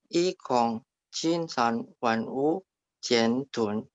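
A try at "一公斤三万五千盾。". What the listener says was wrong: Tun, ditekan. Tunnya nada 4 ya. Tun. Tun, biasa aja, nggak usah angin. Tun. Tun. D baca T. T-U-N bacanya, nggak pakai angin. Tun.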